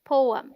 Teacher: The PO sounds like po, as in go, and is this stressed syllable.